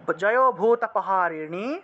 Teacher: মূর্ধন্যটা অর্থাৎ জিহ্বা উল্টিয়ে নয়ের উচ্চারণটা করতে হবে